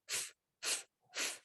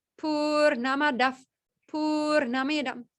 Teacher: This visargaha changes sound and become a f, f, f.